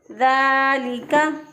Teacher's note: खड़ी ज़बर एक अलिफ के कायम मुकाम होता है तो हमने इसको पढ़ा ज़ालिका। ज़ाल बहुत नरमी से अदा होगा, लाम भी बारीक और काफ भी बारीक होगा